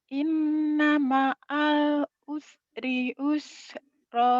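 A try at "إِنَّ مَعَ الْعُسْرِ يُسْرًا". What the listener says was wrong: Ini Yusro. Inna ma'al usri Yusro. Jangan Usro ya. Inna ma'al usri Yusro. Jangan Usro.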